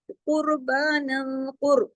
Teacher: काफ मोटा, रा भी मोटा